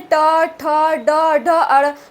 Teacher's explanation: मूर्धा मतलब जब आप उच्चारित करते हैं ट, ठ, ड, ढ, अड़, तो आपका जो जीभ है ये ऊपर तालु के मतलब पास जाता है और वहाँ जाकर के मुड़ जाता है, अंदर तक फोल्ड हो जाता है। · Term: मूर्धन्य वर्ण